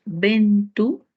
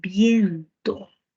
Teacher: la e y la o breves y tónica pasaron a ser diptongos